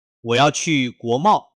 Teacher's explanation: 要读4声干脆，去4声，国贸2个字连贯读